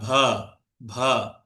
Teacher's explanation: এই হা কিন্তু মহাপ্রাণ ধ্বনির মতো উচ্চারিত হয়, মহাপ্রাণ ধ্বনি।